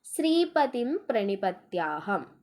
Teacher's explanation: ശ്രീ എന്നുള്ള അക്ഷരം ദീർഘാക്ഷരമാണ് അപ്പോ അത് ഗുരു · തിം എന്നുള്ളത് ഹരസ്വമാണ് പക്ഷേ അവിടെ അനുസ്വാരം വന്നേക്കുന്നകൊണ്ട് അത് ഗുരു